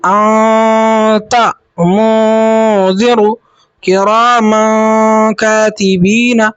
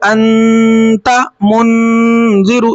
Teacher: اور اگر اخفا حقیقی ہوگا تو اخفا حقیقی کو پڑھیں گے تنوین نون ساکن کی آواز کو ناک میں چھپا کر غنہ کے ساتھ